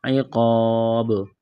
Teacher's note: یہاں پر وقف کریں گے تو با کو ساکن کریں گے، با پر قلقلہ کریں گے، عقاب۔ اس آیت کو مکمل پڑھتے ہیں۔